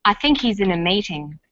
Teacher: the word think is stressed in this sentence and he's is unstressed when these words are linked the H is dropped in spoken